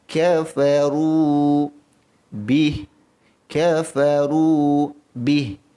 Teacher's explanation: Ra yang baris depan sifatnya tebal. Tafkhim ra, tebalkan ra. Maka bila mana kita tebalkan huruf ra, jangan pula kita lupa akan panjangnya ra ini dengan 2 harakat.